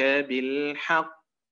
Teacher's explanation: القاف مشددة، حرف مشدد، وهي أعلى مراتب القلقلة